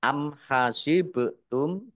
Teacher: Ba sukun, bacaan qalqalah, dibaca memantul, ditampakkan pantulannya · mim sukun bertemu dengan huruf kha, bacaan idhar syafawi, dibaca jelas